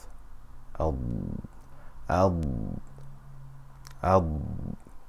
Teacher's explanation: when it has a Sakina or a Shada on it until the tip of the tongue slightly reaches the gum line in front of the mouth